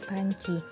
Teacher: kata panci kata panci ini lebih spesifik diucapkan panci di mana perubahan bunyi hambat bilabial menjadi Bunyi hambat apiko alveolar yaitu karena pengaruh nasal apiko alveoler